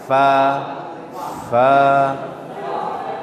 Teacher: huruf fa ini ujung gigi atas menempel ke bibir bawah bagian dalam